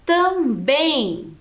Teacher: O bem é a sílaba mais forte. Então, ela é uma oxítona.